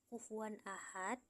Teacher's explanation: Kufuwan ahad, hukum tajwidnya adalah idhar halqi karena tanwin fathah atau fathatain bertemu huruf hamzah atau halib, dibaca jelas tanpa dengung